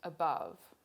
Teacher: So the schwa is the first syllable in the word above. Schwa never occurs in stressed syllables in English.